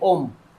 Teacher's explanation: ये जो ओ की ध्वनि भी आ रही है ना आपकी, ओ की ध्वनि आ रही है, अ के बाद ओ की ध्वनि आ रही है, ओ बहुत छोटी है